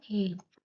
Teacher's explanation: ए, ए दोनों स्वर का उच्चारण स्थान कंठ तालव्य है। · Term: कंठ तालव्य दीर्घ स्वर